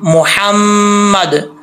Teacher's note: हा बरीक है, इसका ताल्लुक हल्क से है, सीने से नहीं है